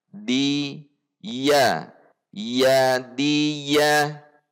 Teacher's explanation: Ujung lidah tidak mengarah ke atas tetapi berada di belakang gigi seri atas dan gusi gigi seri atas. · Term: huruf dal